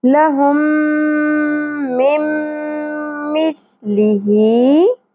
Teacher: آگے دیکھیے میم ساکن کے بعد میم مشدد آ گیا تو یہاں پر ہم ادغام مع الغنہ کریں گے. میم کو میم کے ساتھ ملا دیں گے، دونوں میم کو، اور ناک میں آواز کو ٹھہرائیں گے بھی